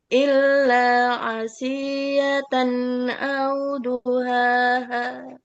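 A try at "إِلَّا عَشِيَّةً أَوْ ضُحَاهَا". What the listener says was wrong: Nah, Bu, Padahal ini pendek, tapi karena ibu terburu-buru, jadi kehabisan nafasnya di akhir kan tadi barusan. Shin itu tafashi, menyebar tuh. Ashi ya.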